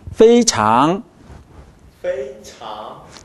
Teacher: 페이 발음이 완전히 끝나고 장 하고 입을 닫지 않습니다.